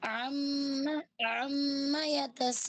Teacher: اما کو زیادہ نہیں کھینچنا، میم کے بعد الف نہیں ہے، صرف میم پہ رکیں گے کیونکہ تشدید ہے، ادھر دو میم ہے